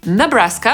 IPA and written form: nəˈbræskə (Nebraska)